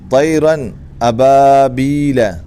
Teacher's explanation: نون کو ظاہر کر کے بغیر غننے کے پڑھیں گے، اس کو اظہار کہتے ہیں۔